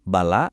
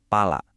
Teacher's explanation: Rasain bedanya di bibir pas ngucapinnya. Hampir sama persis kan? Bedanya cuma satu, getaran kecil di depan, be dan pe.